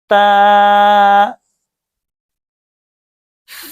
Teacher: زبان کی نوک جب اوپر کے اگلے 2 دانتوں کی جڑ کی طرف والے آدھے حصے سے لگے تو یہ تا ادا ہوگا